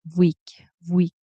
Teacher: I noticed that it sometimes sounds like um it kind of sounds like a mix of a V and a W sometimes